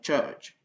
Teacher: le son T et le son ch, ça va nous donner ch